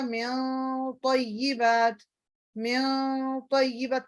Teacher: نون ساکن ہے، اس کے بعد ہیوی لیٹر آ گیا تو آپ کا وہ اخفا بھی تھوڑا سا ہیوی ہوتا ہے